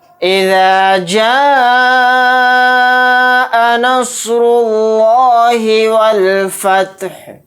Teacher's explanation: اس مد کو ہم 4 الف کی مقدار کھینچ کر پڑھیں گے۔ یہاں پر لفظ اللہ کے لام کو موٹا یعنی پر پڑھیں گے، کیونکہ لفظ اللہ کے لام سے پہلے پیش آ رہا ہے۔